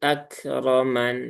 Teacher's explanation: Akroman mannya ya satu harokat ya, dan tidak perlu ditekan ya, tidak perlu sampai akroman.